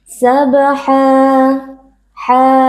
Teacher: kita wakaf pada fathatain berlaku hukum maniwa cara membacanya adalah dengan mengganti fathatain dengan fathah lalu kita panjangkan bacaannya satu Alif atau dua harakat